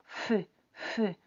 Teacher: ¿Sientes que hay como una presión entre dientes? Hay como un aire que pasa, pero bueno, no tan fácilmente, que tu labio también se mueve.